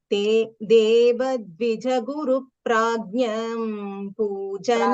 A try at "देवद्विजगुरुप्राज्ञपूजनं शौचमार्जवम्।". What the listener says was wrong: प्राज्ञ, प्राज्ञ. It feels like it's प्राज्ञम, right? देवद्विजगुरुप्राज्ञ पूजनं शौचमार्जवम्.